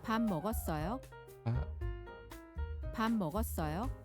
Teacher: I guess it gets shortened to pum in this sentence. It gets combined with the starting syllable or the starting content of the next word.